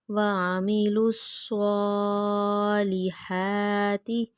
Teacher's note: صاد موٹا پڑھیں گے منہ گول کر کے۔